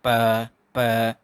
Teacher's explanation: जो ग्लोटिस है ये बिल्कुल ओपन हो जाता है। ग्लोटिस है वो ओपन हो जाता है बोलते टाइम, ठीक है। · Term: वॉइसलेस साउंड्स